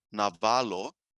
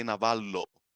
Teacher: it's a different thing to say navalo, and it's a different thing to say navallo. It's with a long l.